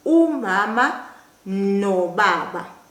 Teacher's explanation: The na and the U would now join and they would become no.